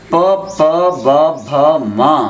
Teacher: పవర్గ ప ప బ భ మ అనే 5 అక్షరాలు పెదవుల నుండి ఉత్పత్తి అవుతాయి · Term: ఓష్ట్యములని